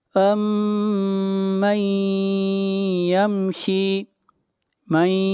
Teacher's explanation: نون ساکن کے بعد یا ہے، اور یا حروف یرملون میں سے ہے، ادغام مع غنہ ہوگا